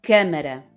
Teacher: câmara, o A tem um som fechado.